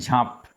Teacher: ম টা যখন লুপ্ত হয়েছে তখন আগের যে বর্ণটাকে সেটাকে অনুনাসিক করে দিয়েছে